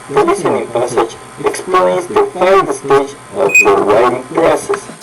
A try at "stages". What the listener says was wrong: Say 5 stages. Don't forget to put that additional syllable. So when stage is singular, you say stage. When you put the S on it, you say stages.